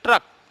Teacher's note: ट्र पे देखिए जिह्वा कंपन कर रही है, रा की ध्वनि आ रही है